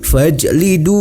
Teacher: hukum bacaannya adalah Mad Thobi'i dibaca panjang sebanyak dua harokat